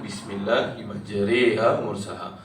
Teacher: Tapi bagi qiraat kita Imam Hafs Asim, Tariq Syatibi, hanya satu tempat saja yang dibaca dengan imalah, iaitu Bismillahirrahmanirrahim mursaha. Imalah ni ringkasnya dia punya baris itu di antara fathah dengan kasrah, di antara baris di atas dengan baris bawah. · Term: bacaan imalah